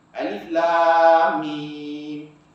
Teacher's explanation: Bila mim mati sukun bertemu dengan mim, maka kita kena baca dengan 2 harakat. Nama dia idgham mislaini, 2 huruf yang bersamaan. · alif bertemu dengan lam dengan mim mati, panjang dia 6 harakat, disebut sebagai mak lazim harfi